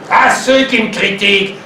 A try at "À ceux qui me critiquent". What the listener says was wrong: À ceux qui me critiquent. C'est trop lié.